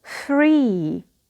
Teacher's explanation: the nucleus is the long e and we have zero coda